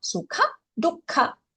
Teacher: And again, dukkha, the kha is Mahaprana.